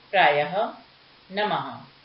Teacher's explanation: इसका प्रयोग शब्दों के अंत में 2 बिंदुओं के रूप में होता है। इसे बोलते समय ह की ध्वनि सुनाई देती है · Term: विसर्ग